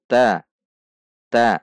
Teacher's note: ujung lidah bertemu dengan belakang gigi seri atas yang berdekatan dengan gusi sehingga ujung lidah kita menyentuh gigi seri atas bagian belakang juga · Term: huruf Dal